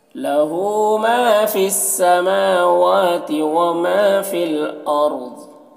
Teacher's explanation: फिल अर्द यहाँ पर लाम साकिन है तो पीछे वाले मुतहर्रिक हर्फ फ़ा से मिलकर पढ़ा जाएगा। अर्द रॉ को पुर पढ़ेंगे, ज़ौद को भी पुर पढ़ेंगे